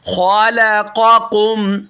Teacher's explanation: खा मोटा है, हेल्दी है, लाम बारीक है, कौफ फिर मोटा है, उर्फ मुस्तालिया में से आ रहे।